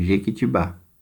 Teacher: Então, a primeira palavra aqui vai ser Jequitibá, porque a sílaba mais forte é a última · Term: sílaba tônica